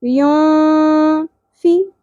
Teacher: फा के नीचे ज़ेर है, बारीक पढ़ना है और एक ही हरकत है, ज़्यादा नहीं खींचेंगे